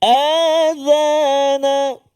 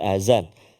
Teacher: Zal, hujung lidah keluar sedikit. Adhana. Jangan tak keluar jadi azan, kan.